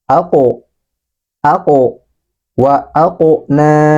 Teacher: Huruf qaf dalam keadaan mati atau sukun, sehingga ini harus kita pantulkan.